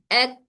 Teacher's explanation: हमारी जबान का, जबान की जड़ ऊपर तालु के सख्त हिस्से से टच हो रही है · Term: काफ